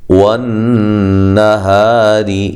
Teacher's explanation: نون مشدد پہ غنہ ضروری ہے، ہا الف مدہ، را باریک، اذا ذال الف مدہ ہے، ایک الف کی مقدار کے برابر لمبا کیا جائے گا۔